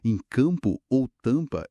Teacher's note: Em campo ou tampa, esse an é um som nasal só.